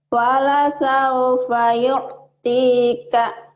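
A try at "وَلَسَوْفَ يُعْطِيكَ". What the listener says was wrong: Wala sao, jangan sao ya Bu ya. Wala sao, ini bunyi A. Ada huruf itu bunyi O, kayak ro, so, go. Ini bunyi A, hurufnya sin, sa. Jadi wala sao, jangan wala sao. Wala saufa yu'tika.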